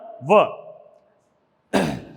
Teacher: ध्यान दीजिए प्यारे विद्यार्थियों, तो दंतोष्ठ का सूत्र है वकारस्य दंतोष्ठम, यानी दंत और ओष्ठ से संयुक्त रूप से बोले जाने वाला वर्ण व